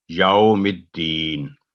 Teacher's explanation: یہ واو یہاں حرف لین کا کام دے رہا ہے, تو نرمی سے اس ادائیگی کی جاتی ہے